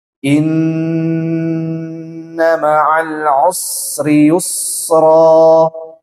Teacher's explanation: Ini kan nun bertasydid, dia harus ditahan sampai dengan 4 harokat.